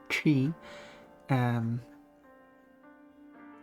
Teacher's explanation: It's a retroflex T.